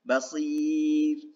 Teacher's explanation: Di sini adalah makhraj ro. Jadi ketika mengucapkan ro, harokat sebelumnya adalah kasroh, maka dibaca tipis